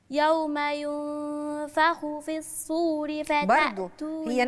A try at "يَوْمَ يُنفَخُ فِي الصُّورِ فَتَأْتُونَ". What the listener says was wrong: هي نفس الصاد هي نفس الصاد ليها مخرج، الصور مش السور، الصور، الصور ده المنفاخ ده زي اللي هينفخ فيه إسرافيل، زي بوق، أحسنت، غير السور، الصور ده البوق الكبير اللي هينفخ فيه.